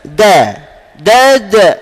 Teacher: hujung lidah sentuh antara gusi dan gigi atas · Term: huruf dal